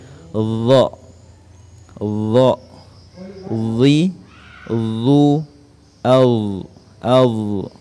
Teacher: huruf dha ini dibaca tebal dengan memoncongkan bibir